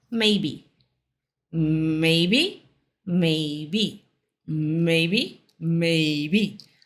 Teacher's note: Essa daqui é uma palavra só, de duas sílabas, mas a primeira sílaba é mais forte.